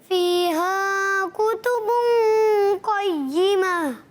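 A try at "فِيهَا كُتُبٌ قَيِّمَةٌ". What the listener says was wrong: माशाल्लाह, बहुत अच्छा।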